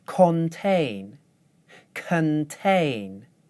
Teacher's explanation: when I do it the wrong way, I use the vowel sound o in the first syllable. When I do it the right way, I use the schwa. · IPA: ɒ